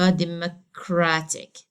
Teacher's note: I have to stress the penultimate or the second to last